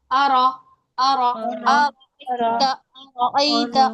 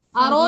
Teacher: على الهدى را کیسا پڑھا جائے گا ہم کیسا پڑھیں گے را کو موٹا پڑھیں گے اور رو نہیں کریں گے کہ را کو ہم نے ایسا لگے کہ پیش دے دیا ہو پیش نہیں دینا صرف را کو پر کرنا ہے آرا أرى